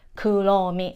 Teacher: Ro mi, even I wrote it down in, uh, here, R, even like her name in English, R, right, but in Japanese we don't have an R sound, we always use L sound